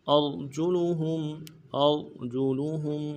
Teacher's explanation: حمزہ کو را کے ساتھ ملانا ہے، را کو موٹا کریں گے ، جیم کو نرم سے ادا کریں گے، لام کو بھی